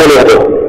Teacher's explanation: huruf nun yang pertama melebur secara sempurna ke dalam huruf nun yang kedua